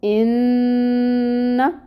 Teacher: غنہ ہوتا ہے ناک میں آواز لے جانا، اور اب یہاں پہ جو فتحہ ہے یعنی زبر کی حرکت، اس کی مقدار بھی 1 کاؤنٹ ہوگی۔ اس کو لمبا نہیں کھینچیں گے۔